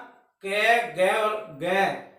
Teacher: Back of the tongue contact against soft palate, या जीभ का पिछला हिस्सा मतलब जीभ मुड़ के सॉफ्ट पैलेट पे टकराएगी। आप इस तरह से बोल के देख सकते हैं, जीभ उछल जाती है और पिछले पार्ट में जाती है। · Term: कंठ